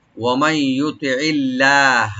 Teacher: লফজ জালালা এখানে আমরা লাইট করে পড়বো, ডিপ না, লাইট করে পড়বো